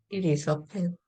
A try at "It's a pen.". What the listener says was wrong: 그냥 it's a pen 이렇게 하면 돼. it is를 빨리 하면 it's it's a pen.